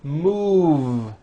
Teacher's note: Move has that voiced V sound.